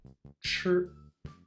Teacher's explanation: The CH sound should be made in the same way as ZH, but without any vibration, like ch in chocolate, but once again with the tongue pushed back in the mouth.